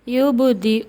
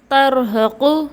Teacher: یہاں حمزہ اور ہا دونوں حلق کے آخری حصے سے ادا ہوئے ہیں